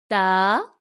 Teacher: تا زبان کی نوک سامنے والے دانتوں کی جڑ سے لگے